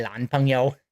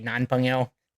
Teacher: they confuse their Ns and their L's or they might call their boyfriend a lan pongo instead of a nonpo.